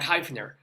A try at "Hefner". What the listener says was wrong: It's actually pronounced Hefner. I thought it reads Heifner, but everybody makes that same mistake, including me when I first met him. Hefner.